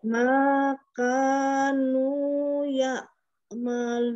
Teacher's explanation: dia mengalir kan ainnya dari tenggorokan bagian tengah ya.